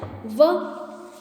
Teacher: दंतोष्ठ यानी कि दांत और होठों के द्वारा बोलने वाला दंतोष्ठ